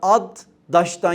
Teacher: Adaş kelimesinin aslı ad daştan gelir. D'lerden biri düşmüştür. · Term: ünsüz düşmesi